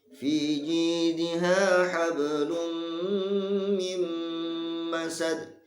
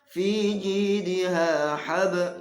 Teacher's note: Di sini ada qalqalah, namun qalqalahnya sughra yang kecil.